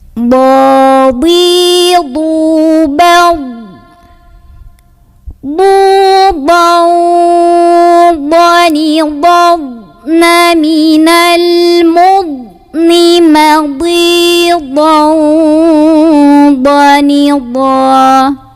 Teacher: Ini dhad adalah huruf yang cuman satu-satunya yang keluarnya bukan dari ujung lidah, melainkan dari sisi-sisi lidah. Sisi lidah kiri, sisi lidah kanan, atau kedua-duanya. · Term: sifat istitolah